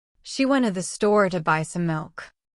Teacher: The stressed words are she, went, store, buy milk.